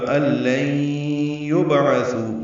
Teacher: با ساکن پہ قلقلہ ہے